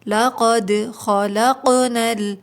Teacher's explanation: قوف بھی حروف قلقلہ ہے اور ساکن ہے تو آواز پلٹ کے آئے گی